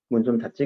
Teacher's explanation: 닫지라고 할 때는 발음이 찌로 나지. 예사소리와 예사소리가 만나니까 그래요. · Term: 된소리 대기